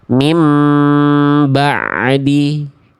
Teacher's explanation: menambahkan suara tambahan pada huruf ain sukun berupa pantulan.